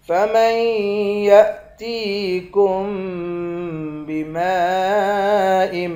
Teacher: میم کے بعد الف ہے، اس الف پر مد ہے، اس مد کو 5 الف کی مقدار کھینچ کر پڑھیں گے